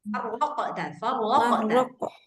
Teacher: Qafnya harus tebal qalqalah.